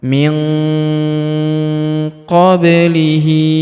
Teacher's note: kita baca dengung dan samar dengungnya kita tahan 2 sampai 3 harakat